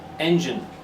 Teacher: It's the first syllable. Engine. So the gine becomes gin.